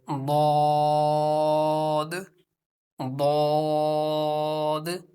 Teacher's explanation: दद को पुर यानी मोटा पढ़ेंगे क्योंकि यह रूफे मुस्ता आलिया में से है एक मर्तबा दोहरा लीजिए अब हम रूफे तरफ समझने की कोशिश